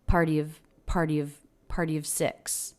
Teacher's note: she makes a really quick V sound along with the schwa